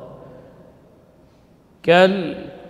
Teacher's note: Kemudian alif lam al-qamariyah, jadi dibaca idhar, berarti jelas lamnya. Kal mengalir sebagian dari suara karena juga lam termasuk huruf tawassut baina syiddah wal rakhawah.